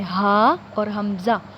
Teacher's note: ہا اور حمزہ ان دونوں کا ایک ہی مخرج ہے کہ حلق کے نیچے والے حصے سے ادا ہوتے ہیں